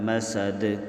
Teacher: یہاں دال دو زیر دین پر ہم نے غنہ بھی کیا ہے اور قلقلہ بھی کیا ہے۔ حروف قلقلہ 5 ہیں، قاف، طا، با، جیم، دال۔